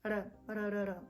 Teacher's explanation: our R is very soft and pronounced at the front of the mouth, so it's R, R, R, R. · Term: very soft R